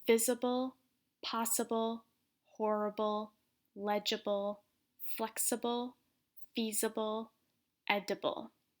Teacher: So notice all of these words, the stress is at the beginning of the word.